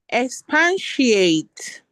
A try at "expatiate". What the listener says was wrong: It's not pan. If you look at the spelling, there is no PAN there. Expatiate. Expatiate.